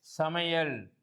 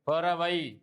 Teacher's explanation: ஐகாரம் சொல்லின் இடையிலும் இறுதியிலும் வரும்போது 1 மாத்திரை அளவில் ஒலிக்கும். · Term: ஐகார குறுக்கம்